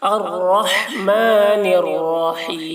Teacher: رائے مشددہ ہے، را پر ہوگی، رحیم ایسے پڑھیں گے۔ حیم ہا کی ادائیگی حلق سے کریں گے